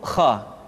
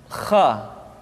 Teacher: Kha dikeluarkan dari pangkal tenggorokan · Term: huruf Kha